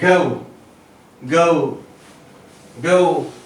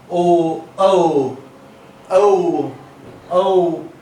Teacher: So these are diphthongs because two vowels are gliding into each other to give us a new sound, and our mouth changes the shape while uttering this sound